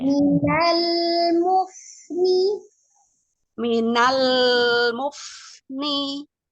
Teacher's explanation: ujung dan tepi lidah secara bersamaan menyentuh ke gusi atas Y sentuhkan Minal Umi jangan lepas sebelum mengucapkan huruf selanjutnya jadi